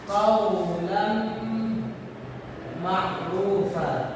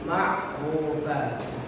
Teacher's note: Pada lafaz qaulan ma'rufa itu huruf ra-nya ma'rufa dibaca tebal, bukan ma'rufa, tapi ma'rufa.